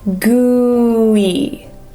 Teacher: you want to make sure we separate oo and then e.